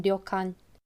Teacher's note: instead of having direct r and l sounds in japanese they use a sound that's somewhere in between